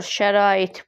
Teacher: Vurğu ikinci hecadadır, yanlış, sondadır 3-də. İkinci hecadakı sait uzun tələffüz olunur